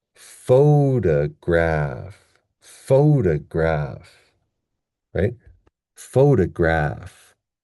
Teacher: we have the stress at the beginning, and that's our major stress. And then we have an unstressed syllable.